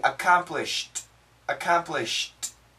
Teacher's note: So here we have an M, which is a strong sound, and a D, but actually a T, accomplished, accomplished. And what happens is this M cancels the T.